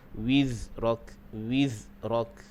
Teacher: Kemudian wizrak, huruf zai, sifatnya adalah sifat bunyi dia umpama bunyi lebah. Dia termasuk dalam sifat sofir, berdesir. Jadi pastikan zai dibunyi dia umpama bunyi lebah.